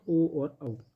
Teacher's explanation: कंठ ओष्ठ से सिर्फ स्वर आते हैं, ओ और औ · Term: कंठोष्ठ